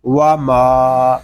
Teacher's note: واو زبر وا، میم الف زبر ما، وا ما، میم کو ہم ایک الف تک کھینچ کر پڑھیں گے کیونکہ یہاں پہ الف مدہ ہو رہا ہے۔ میم کو جب ادا کریں گے تو ناک میں آواز نہیں جانی چاہیے، اس کو ماں نہیں پڑھیں گے، اس کو پڑھیں گے ماں۔